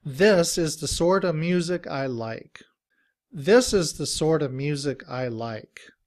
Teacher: the t sound even sounds more like the d sound, like in dog